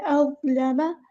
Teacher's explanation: لام باریک ادا ہوگا اور میم کو لمبا نہیں کرنا، حرکات کو لمبا نہیں کرتے۔